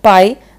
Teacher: Pai não sai do nosso nariz, né? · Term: ditongo oral